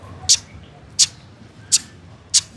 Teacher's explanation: la consonante modificada CH con glotal